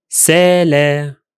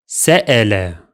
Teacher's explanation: a glottal stop, that breaks the flow of the word